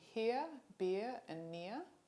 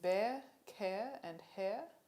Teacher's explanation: there are three other diphthongs in australian english where the tongue moves toward the mid-central position of schwa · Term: centering diphthongs